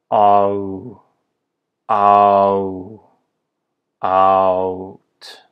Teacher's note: And finally, for the sound out, it's really like taking the A, even though we write it with an O in English, it's really like taking the sound ah, like in father, like the Esperanto letter A, and following it with the U.